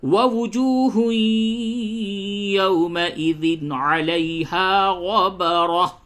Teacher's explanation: نون ساکینہ و تنوین کے بعد حروف حلقی عین ہے تو یہاں پہ ظاہر کریں گے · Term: اظہار